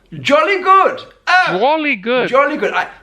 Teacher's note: he said good a little bit higher than I would say it.